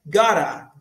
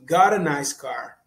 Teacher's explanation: Você coloca um R no lugar do T porque é um flap T. É um T que se transforma, que agrega o som de um R quando vai falar rápido.